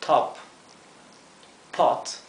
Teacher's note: la o es una o que tiende un poco a parecerse a una a verdad sería algo entre medio entre una o y una a